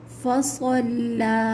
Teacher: صاد موٹا حرف ہے، اس کو بھی موٹا پڑھا جائے گا، اور لام جو ہے وہ لفظ اللہ اور اللہم کا نہیں ہے، اس لیے اس کے اوپر چاہے زبر آ جائے ہم اس کو باریک ہی پڑھیں گے، ٹھیک ہے۔ فصلہ نہیں ہوگا، فصلہ، ٹھیک ہے۔